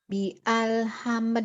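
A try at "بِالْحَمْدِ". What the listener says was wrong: alnya dari mana? Alifnya nggak disambung. Alifnya nggak bunyi. Kalau disambung alifnya nggak.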